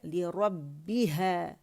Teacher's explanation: वअज़ीनत लिरब्बिहा वहुक्कत, ली लैम कसरा ली बारीकी से अदा करेंगे, लिरब्बी, रॉ मोटा है, लिरब्बिहा, बा मुशद्दद है, स्प्लिट्स ऑफ सेकंड का पॉज देंगे क्योंकि बा के अंदर शिद्दा है